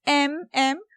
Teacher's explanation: So the first one is bilabial nasal, which is M, M.